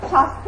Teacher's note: যুক্ত ব্যঞ্জন বর্ণের সঙ্গে জফলা যুক্ত হলে সাধারণত তার উচ্চারণ হয় না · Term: জফলার উচ্চারণ করি না